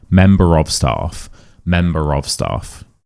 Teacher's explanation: Member ends in an H. We don't say the R, but there's a vowel next to it, so we do say it. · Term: linking R